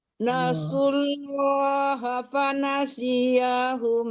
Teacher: Si-nya tidak boleh tertahan. Nasullah itu tebalkan langsung ya, jangan tipis dulu baru tebal ya. Jangan nasullah, nasullah langsung tebal lam Allahnya dibaca.